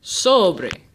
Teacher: Sobre es llana, because the emphasis is on the second to last syllable